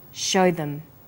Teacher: them is unstressed also uses the words show them here show is stressed and them is unstressed · show is stressed and them is unstressed, so we say show them. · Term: vowel and consonant linking